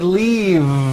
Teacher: It's not leaf with an unvoiced F. I should have said leave with a voiced V sound.